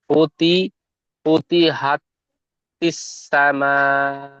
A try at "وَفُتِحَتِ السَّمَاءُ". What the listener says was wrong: এখানে ও ছেড়ে যাচ্ছে। ওয়াফুতিহাতিস সামাউ।